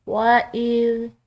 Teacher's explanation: وَإِذْ قَالَ، ساتھ ساتھ ہم اس کی تجوید بھی دیکھیں گے۔ وَإِذ، ذال نرم حروف میں سے ہے، یعنی کہ ذال کو ادا کرتے ہوئے کسی قسم کی سیٹی کی آواز نہ ہو